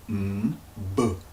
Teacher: the M with the B where both use the lips to form the sound